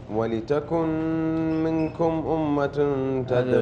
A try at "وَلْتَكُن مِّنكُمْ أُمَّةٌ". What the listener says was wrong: أستاذ سامي، النون ما تنطق. النون ما تنطق. النون الخالي هذه مدغمة. أي حرف خالي من الحركة كأنه ملغي، يعني أدغمت في الحرف الذي بعده. ولتكم على طول تنتقل للميم مباشرة.